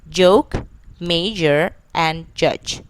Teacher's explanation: The initial, medial, final like chip, catch, and butcher. The next one is j, which is voiced, alveopalatal, and affricate. The initial medial final like joke, major, and judge.